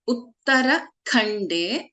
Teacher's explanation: Iti Shri Brahmanda Purane Uttarakhande, Kha is a Mahaprana.